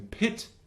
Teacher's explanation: So front high sound would be I as in pit.